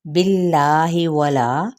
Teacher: باللہ ولا یہاں پہ اس میں جلالہ کا لام باریک